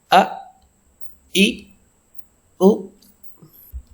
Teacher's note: the Hamza sound in this example, as you see, which is coming from the bottom of the throat